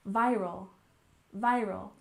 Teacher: stress on the first syllable